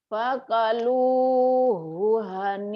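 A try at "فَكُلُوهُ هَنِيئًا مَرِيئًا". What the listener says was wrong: pakulu, Bu. Pakulu bukan pakalu, pakulu. Fakuluhu. Fakuluhu hani'am mari'a. Fakuluhu hani'am mari'a.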